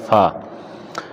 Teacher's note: اوپر کے دانتوں کے کنارے اور نچلے ہونٹ کے تر حصہ سے ادا ہوتا ہے۔ اوپر کے دانتوں کے کنارے، اوپر کے جو دانت ہیں اس کے جو بالکل آخری کنارے ہوتے ہیں، اوپر کی طرف، جڑوں کی طرف نہیں، نیچے کی طرف، اور نچلے ہونٹ کے تر حصہ سے ادا ہوتا ہے فا۔ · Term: حروف شفویہ